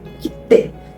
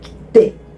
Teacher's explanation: tem meio que uma mini pausa ali entre o ki e o te, né?